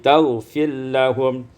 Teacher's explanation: Pada ayat 118, taghfir lahum, idghamur ra fil lam, diidghamkan ra pada lam menjadi taghfir lahum.